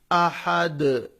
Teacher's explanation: ایسا ایکو بھی کریں گے، قلقلہ بھی کریں گے. ہم جب جزم دیں گے دال کو تو ساؤنڈ کو ایکو بھی کریں گے